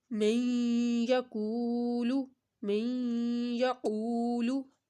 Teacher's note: نون ساکن کے بعد یا ادغام کا آ رہا ہے، تو یہاں پر ہم نے ادغام یعنی غنہ کرنا ہے، اور کو ہم نے ایک الف کے برابر لمبا کرنا ہے، کیونکہ وہ ساکن کے پہلے پیش آ رہا ہے، تو من یقولو۔